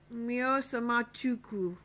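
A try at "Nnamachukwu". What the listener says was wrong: You said Mio. You said Mio. You really just said Mio. When it's a double N, remember we do.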